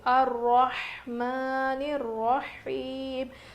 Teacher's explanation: ہا کی آواز بالکل ظاہر ہونی چاہیے، رو موٹا پڑھیں گے، کھڑا زبر ہے میم کے اوپر